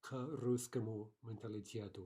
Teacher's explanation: they introduce a pause or at the very least some type of vowel sound in between the k and the word following it